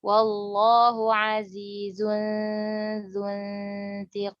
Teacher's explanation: Nun sukun ketemu huruf ta menjadi ikhfa.